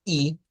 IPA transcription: iː